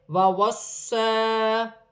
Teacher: صاد موٹے حرف میں سے ہے، سیٹی والا حرف ہے، مشدد ہے، جماؤں کے ساتھ ادا کیا جائے گا۔